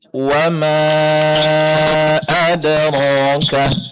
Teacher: mad jaiznya lebih dipanjangkan lagi